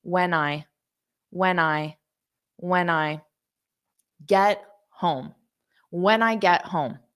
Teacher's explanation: So I'm just adding a little bit of an N sound in front of the I. So it just sounds exactly like this, I, which is why I spelled it like that, to smooth it out.